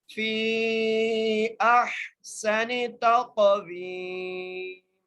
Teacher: فی اح، فی اح، سین کے اوپر زبر ہے، اور سین کو سیٹی سے پڑھیں گے، نون کے زیر ہے، تا کو قاف سے ملائیں گے اور قاف پر قلقلہ کریں گے، قاف کو موٹا کر کے پڑھیں گے، واؤ کو ایک الف کی مقدار کھینچ کے پڑھیں گے اور میم کو وقف کی صورت میں ساکن کر دیں گے۔